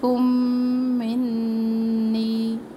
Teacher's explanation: میم silent ہوگا اور کاف کو ہم میم تشدید سے ملائیں گے، اس لیے کہ اس کے اندر پہلا میم جو ہے وہ ساکن ہے.